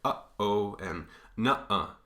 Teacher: Right in between those two sort of syllables, you get a stop. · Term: glottal stop